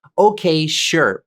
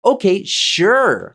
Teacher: sure too but the way you say it is very important there's a rising and then falling intonation to how you say it so not okay sure but okay sure like that okay sure